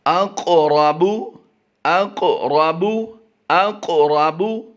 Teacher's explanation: क़ाफ और रा को पुर करना है, ग्रीन कलर में है, और क़ाफ पर जो जज़म है उसकी वजह से हम इसे कलकला करके भी पढ़ेंगे